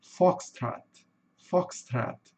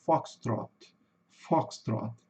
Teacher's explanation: No inglês americano, eles têm o costume de O ter um sonzinho de a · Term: somzinho de A